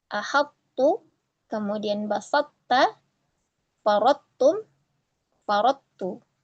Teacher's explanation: dengan tetap menjaga itbaqnya ya dengan cara penuturnya menutup lidahnya saat mengucapkan tho tanpa ada qalqalah kemudian menjauhkannya dari ta.